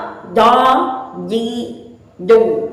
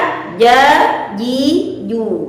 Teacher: jim dilafazkan dengan suara yang tipis, kemudian dengan pita suara yang dibuka